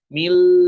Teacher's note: Jadi bukan dibaca Robbana atina mil, enggak kayak gitu. Tapi Robbana atina mil ladunka, mil langsung mil, tidak masuk hidung. Mil. Nah, kalau masuk hidung ya bunyinya juga dengung ya, ada dengung-dengungnya.